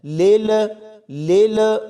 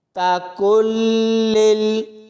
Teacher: لام کو لام کے ساتھ ملائیں گے تو لام کی آواز کو فوراً بند کر دینا ہے